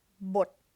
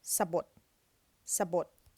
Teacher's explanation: Now that's a low tone because it's a dead syllable.